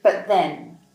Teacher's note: In this case, we don’t pronounce the final T in “but”. Instead, we say “buh-then”.